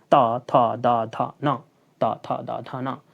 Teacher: यानी हवा जो हमारे निकलता है मुख से वो क्या? दांत को स्पर्श करके ही निकलता है। · इन वर्णों के उच्चारण में हमारी जो जीभा होती है वो दांतों को स्पर्श करती है, दांत के नीचले वाले भाग को स्पर्श करती है। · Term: दंत वर्ण